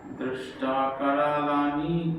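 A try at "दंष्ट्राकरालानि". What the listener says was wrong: দংষ্ট্রা একটা অনুস্বার আছে দেখুন, দংষ্ট্রা কারালানি চাতে মুখানি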